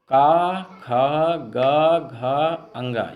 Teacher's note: जैसे का वर्ग में का, ख, ग, घ, अंगा ये कंठ का स्पर्श करते हैं, कंठ से बोले जाते हैं